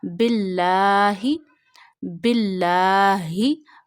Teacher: You have to read lam of Allah here in a thin voice, because when zir come before lam of Allah, you read lam of Allah in a thin voice, but stretch lam of Allah up to one finger because of standing fatha. · Ha is pronounced from the last part of your throat.